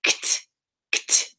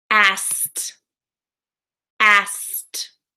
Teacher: We don't actually really pronounce the kt in asked when we're linking it in a sentence.